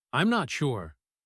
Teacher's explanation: I'm not sure. The M and N sounds link. Also, notice the phrase, deduct the cost.